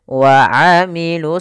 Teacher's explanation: yang dia ditulis tapi tidak dibaca sehingga langsung kepada huruf Shad Kemudian pada lafel Shad itu kita tebalkan wailusih ya ditebalkan huruf shadnya Kemudian pada lafal sendiri ada Mad · pada lafal shad itu kita tebalkan wa amilus solihati, ya, ditebalkan huruf shadnya.